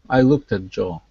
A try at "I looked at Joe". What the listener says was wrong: Great, great.